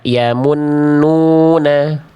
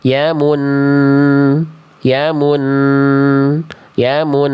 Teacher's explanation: Jadi bunyi n-nya itu ditahan dulu.